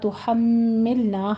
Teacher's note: تحملنا ہم میں غنہ واجبہ کریں گے، میم مشدد ہے، آگے نا کا الف مدہ پورا ادا کیجیے۔